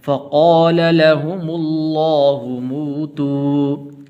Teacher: لفظ اللہ کو پر کر کے پڑھنا ہے